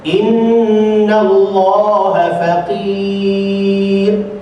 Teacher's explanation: inna ada dengung, nallah lam tebal, serius, faqir ra tartib, tak salah tajwid.